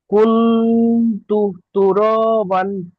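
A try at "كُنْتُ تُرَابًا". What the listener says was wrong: মাশাআল্লাহ, খুব সুন্দর।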